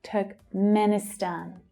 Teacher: Stan is the strongest syllable.